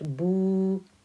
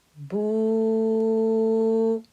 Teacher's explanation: when it's followed by a letter hamza, becomes boo, a 4-count stretch